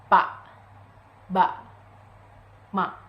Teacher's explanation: Produced consonant sounds by putting 2 lips together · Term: Bilabial stop